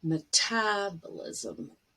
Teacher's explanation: the syllable stress is on tab